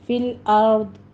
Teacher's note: ضاد کو بھی پر پڑھنا ہے، را بھی مفخم ہے